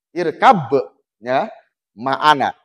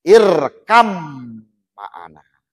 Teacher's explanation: Karena dimasukkan ke mim maka hilang kolkolahnya.